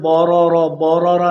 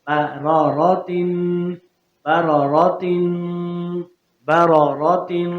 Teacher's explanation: با کو باریک ہی پڑھیں گے موٹا نہیں کرنا. را کی وجہ سے بورا بورا نہیں کرنا.